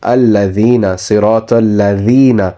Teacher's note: So you place your tongue between your teeth when you pronounce a dal.